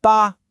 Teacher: Let's combine it with that sharp falling fourth tone.